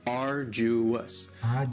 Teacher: Arduous has 3 syllables, and the stress is on the first syllable.